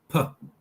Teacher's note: Then we have the P, bilabial stop